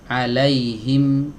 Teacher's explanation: Kalau huruf mim terhalang oleh dua bibir.